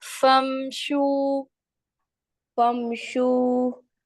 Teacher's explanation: ایک اور چیز یہاں پہ دیکھیں، فم نہیں کریں گے ہم، ٹھیک ہے، آواز آپ کی باؤنس نہیں ہوگی، پلٹ کر نہیں آئے گی میم کی. فمشو.